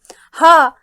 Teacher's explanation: जब हा का उच्चारण करते हैं तो हमारे गले से झटके से आवाज बाहर निकलती है और हमारा मुंह खुला रहता है। तो ऐसे व्यंजन काकल्य के अंतर्गत आते हैं और उन्हें काकल्य व्यंजन कहते हैं।